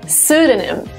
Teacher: The first P is silent.